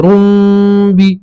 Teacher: ٹھیک ہے تو پڑھیں گے ایک را کے اوپر ایک پیش پڑھیں گے پھر رو بنے گا وہ تو رو کو میم سے ملائیں گے. روم روم تنوین نہیں پڑھیں گے صرف ایک پیش پڑھیں گے اور میم سے ملائیں گے